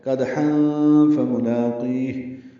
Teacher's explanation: وسط حلق سے ادا کریں گے حا کو، اور تنوین کے بعد فا آنے کی وجہ سے اخفا ہوگا۔ · دال نرمی سے پڑھا جائے گا اور اس پہ قلقلہ ہوگا